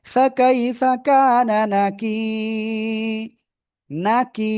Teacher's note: নুন জবর না, কাফিয়া জের কি, এক আলিফ টান। জেরের বামে জজমালা ইয়া, মাদের হরফ হবে, আমরা এক আলিফই টেনে পড়ব।